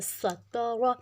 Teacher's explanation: یہ جو سین ہے سیٹی والا ہے، تا پتلا ہے، را موٹا ہے